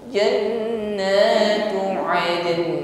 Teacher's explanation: huruf nun harus tetap diperdengarkan walaupun hanya sifat hurufnya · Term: tawassul huruf nun